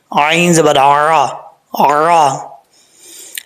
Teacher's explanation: عین کو پڑھتے وقت حمزہ کی آواز نہیں آنی چاہیے، عین کی ہی آواز آنی چاہیے، ٹھیک ہے۔